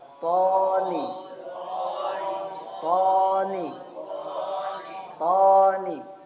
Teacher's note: ujung lidah ketemu dengan pangkal gigi seri atas atau tempat tumbuhnya gigi seri atas